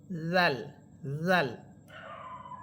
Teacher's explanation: মাখরাজ, জাল হরফের মাখরাজ হচ্ছে জিহ্বার আগা বা অগ্রভাগ সামনের উপরের দুই দাঁতের আগার সাথে লাগবে। জিহ্বার অগ্রভাগ সামনের উপরের দুই দাঁতের আগার সাথে লাগবে, জাল, জাল। আর জা জিহ্বার অগ্রভাগ সামনের নিচের দুই দাঁতের আগার সাথে লাগবে।